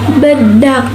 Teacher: udara tidak langsung keluar karena terhambat oleh bibir yang menutup